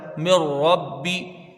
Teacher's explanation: نون ساکن ہے اس کے بعد را ہے تو یہ نون را سے بالکل بدل جائے گا، را کو پر پڑھا جائے گا، مر ربی، اس کو جلدی پڑھا جائے گا، مر ربی۔ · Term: بغیر غنہ کے ادغام